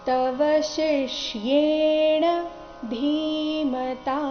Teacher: ನೋಡಿ ತವಶಿಷ್ಯೇಣ ಧೀಮತಾ ತವ ಶಿಷ್ಯೇಣ ಇಲ್ಲಿ ಶಂಕರದ್ದು ಷ ಕ್ಕೆ ಈ ಕಾಕಾರ ಶಿ ಆದ ನಂತರ ಅರ್ಧ ಷಟ್ಕೋನದ್ದು ಷ ಬಂದಿದೆ